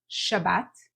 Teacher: We say Shabbat. So if you're saying Sabbath, you need to change your S into an SH sound, not Sabbath, but Shabbat.